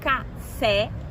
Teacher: café é uma palavra oxítona, tem a última sílaba tônica